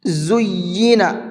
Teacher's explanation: اس یا کو ڈبل کر کے پڑھیں گے کیونکہ یا کے اوپر تشدید ہے